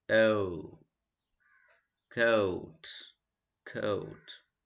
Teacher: open away from the roof of the mouth oh coat coat our lips are in open lip rounding position it is open it's away from the roof of the mouth at the same time lip is in rounding position out that